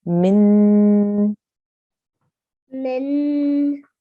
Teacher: So if we have a noon here with a shadda, it means excuse me, it means we have a noon mushaddad or a noon gunna. So we need to hold and make a nasal sound for about 2 seconds